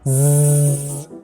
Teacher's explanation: There's vibration, so it's voiced. Now, what part of the mouth do you make the sound from? It seems to be touching right behind my teeth, so it's alveolar. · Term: voiced alveolar consonant